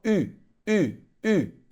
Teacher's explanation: Ele é um intermediário entre o U e o I. Você vai fazer a boca do U e vai fazer o som do I. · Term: U com trema